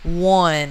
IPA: wʌn